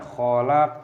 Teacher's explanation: qaf memiliki sukun dan dibaca sebagai qalqalah. Pantulkan suaranya, khalaq. Huruf Q itu disebut qalqalah.